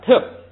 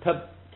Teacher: 第一个原来是降调，特，现在变成平声 ，特。第二个呢是曲，就是曲，这个咱们还讲过一个规则，是